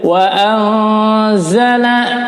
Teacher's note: nun sukun bertemu zai, hukumnya adalah ikhfa, ditahan, disamar bacanya